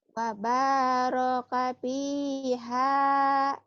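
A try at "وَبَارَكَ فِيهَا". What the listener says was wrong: Wabah. Kedengarannya kayak paba ya. Karena itu efek dari mulut kurang ngebuka. Kedengarannya kayak paba. Padahal wabah. Wabah bukan paba ya.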